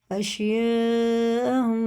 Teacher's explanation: مد متصل ہے، اور یہ اس کے بعد حمزہ ہے تو 4 الف کے برابر اسے کھینچنا، لیکن الف سے پہلے زبر ہے، الف مدہ ہے، ایک الف ہی ہو گیا، تو 4 سے 6 الف تک اسے کھینچ کے پڑھنا۔